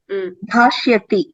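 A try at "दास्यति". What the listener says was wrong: Dhasyati. Not dhashya. Dhasyati.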